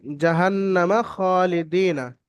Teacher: খ এর পরে খারাজবার আলিফ মাদার সমতুল্য খারাজ আলিফ মাদার মধ্যে এক আলিফ পরিমাণ টান দিয়ে পড়তে হবে লামের নিচে দালের নিচে লামের নিচে জের আছে হারাকা তাড়াতাড়ি পড়তে